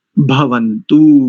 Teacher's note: तो जैसे बा वर्ण है ना, बकार, उसको तो अल्प प्राण से बोलेंगे और इसका अगला वर्ण क्या है, भकार, तो भकार को महाप्राण से बोलेंगे, उच्चारण शुद्ध आ जाएगा